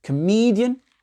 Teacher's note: Le CO, là, il a été réduit. L'accent tonique est sur le MI.